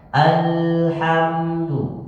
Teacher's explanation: huruf lam itu ada tawasud tawasud itu Pak seakan-akan satu ketukan